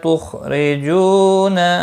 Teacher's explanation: را زیر کی وجہ سے باریک ہوگا